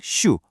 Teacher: 공기를 그냥 슈 하고 부드럽게 흘려보내는 시옷 계열의 소리로 바뀌는 거예요